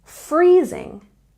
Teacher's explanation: we stress the first syllable in freezing